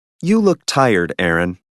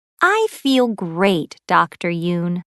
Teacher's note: notice these statements with direct address there is usually falling intonation and a pause before the name